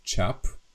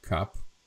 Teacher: It's not cap, but it's a palatalized K to ch, so it's čap, not kap.